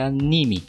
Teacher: Já em português de Portugal é anime, a ênfase no I.